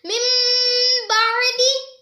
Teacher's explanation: نون ساکن کو میم سے بدل کر اخفا کریں گے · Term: اقلاب